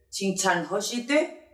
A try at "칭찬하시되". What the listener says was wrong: 그렇지.